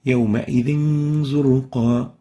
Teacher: Here we have a tanween followed by a zain, harf zay, in 2 words, and we will hide the nun sakinah of the tanween and keep the ghunna for 2 units